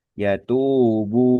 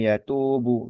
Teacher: bunyi panjang yang dasar atau bunyi panjang atau diistilahnya mad thbi'i ya itu dua harakat maka huruf ba domah itu jangan cepat-cepat justru justru di apa ya diulur gitu ya yatubu gitu ya karena memang panjang itu di situ.